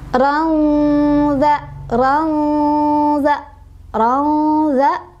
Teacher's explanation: ada ikhfa ausath, sebabnya karena ada tanwin fathah bertemu dengan huruf ikhfa, yaitu zal ya.